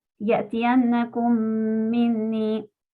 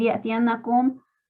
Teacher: Porque después de la mim saken, la siguiente palabra empieza con otra mim. Así que junto las dos palabras y leo la mim de la palabra siguiente con shadda. Para el caso de que vemos en pantalla ya tiene la shadda puesta. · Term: idgham